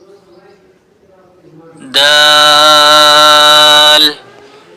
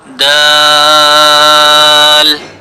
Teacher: दाल की अदायगी किस तरह से करनी है कि हमारा जो ज़ुबान का सामने वाला हिस्सा है, हमने इसको ये वाला जो हिस्सा है, दांतों के ऊपर का जो हिस्सा जिसको हम मसूड़े कहते हैं, ऊपर वाले दांतों के मसूड़ों के साथ हमने अपनी ज़बान को लगाना है तो हमारी दाल अदा हो जाएगी।